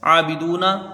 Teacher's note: عین میں 1 الف کی مقدار رہے گی، کھینچ کے پڑھا جائے گا، دال با پیش دو، اس کو کھینچ کے پڑھیں گے، واو مدہ ہے۔